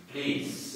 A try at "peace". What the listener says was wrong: No, please, but peace. Peace. Peace. Peace. Peace.